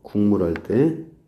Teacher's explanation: 국물이 할 때 여기도 마찬가지 기억이 이응으로 바뀌었죠